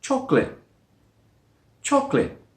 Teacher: There is a schwa sound in there which is dropped. We don't say chocolate with 3 syllables.